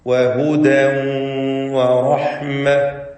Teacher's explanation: വഹുദൻ എന്ന ആ തൻവീനിനെ ശേഷമുള്ള വാവിലേക്ക് ലയിപ്പിച്ച് മണിക്കണം. ഇദ്ഗാം ബിഗുന്ന നാഖിസ് എന്ന വിധിയാണ് നൽകപ്പെടുക.